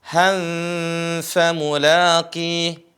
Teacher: Di sini dibaca han seharusnya, tapi ketika bertemu dengan huruf fa menjadi ikhfa. Han-nya disamarkan.